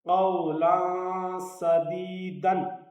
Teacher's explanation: قاف پر پڑا جائے گا، تنوین کے بعد سین ہے، اس لیے یہاں اخفا ہوگا